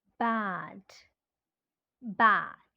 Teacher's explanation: this is the front vowel ah